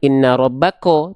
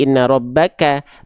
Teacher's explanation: Kaf ketika berharakat fathah dibacanya vokal A atau vokal o ternyata huruf Kaf itu dibaca ketika fathah dibaca menjadi vokal vokal a bukan vokal O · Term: tipis